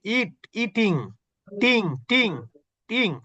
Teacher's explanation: আইএনজির উচ্চারণের মধ্যে কিন্তু এনটা স্পষ্ট হয় না